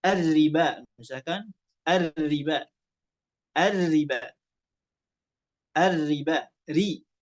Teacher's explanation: tapi karena ro tersebut ya bertasydidnya kasrah, ya kita baca dalam keadaan wasal, maka ro tersebut dibaca tipis